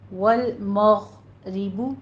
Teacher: والمغ نہیں کہنا ہے، قلقلے نہیں کرنے. اسٹاپ کریں گے آواز کو